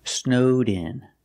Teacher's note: pronounce the Ed with a D sound link it to the next sound